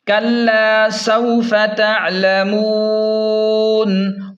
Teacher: وقف کی صورت میں ہم نون کو ساکن کریں گے اور یہاں پر 3 الف کے برابر جو ہے نا مد کریں گے، یہ مد عارض ہے۔